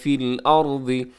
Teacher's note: ارض میں را موٹا پڑھا جائے گا کیونکہ را ساکن سے پہلے زبر ہے